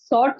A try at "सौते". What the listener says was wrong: सौते. टी नहीं बोलना, टा नहीं बोलना, ता बोलना.